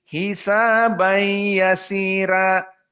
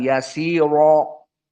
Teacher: meskipun dia fathah atau dia madmumah, ro-nya itu dibaca dalam keadaan at-tarqi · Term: tarqiq